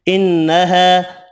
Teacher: نون مشدد پر غنہ کرنا ہے، الف مدہ ایک الف کی مقدار میں کھینچ کر پڑھنا ہے۔